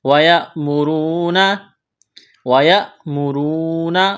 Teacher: را کو موٹا کرنا ہے، واو مدہ ہے۔